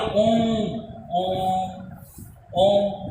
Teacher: आपका दीर्घ स्वर से भी ज्यादा समय लगता है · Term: प्लूत स्वर